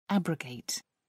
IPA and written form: ˈæbrəʊˌɡeɪt (abrogate)